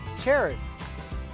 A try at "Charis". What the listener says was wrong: No, look, the letter is silent.